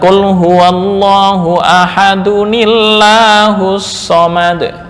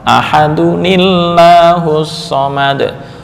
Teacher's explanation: tanwin ketika diwasolkan itu ada harokat penolong, yaitu kasrah